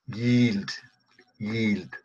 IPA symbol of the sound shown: j